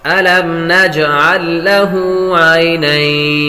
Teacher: جیم حرف قلقلہ میں سے ہے تو قلقلہ کریں گے.